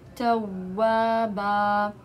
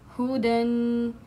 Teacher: قاعدہ نمبر 3، اگر آخری لفظ دو زبر پر ختم ہو رہا ہو تو اس کو الف مد کی طرح پڑھیں گے، یعنی کہ دو زبر وقف کی حالت میں الف مد سے چینج ہو جاتا ہے، یعنی کہ اس کا جو ایک زبر ہوتا ہے وہ الف مد سے چینج ہو جاتا ہے۔